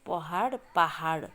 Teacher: पहाडलाई चाहिँ अलाई आको रूपमा उच्चारण गरिएको छ।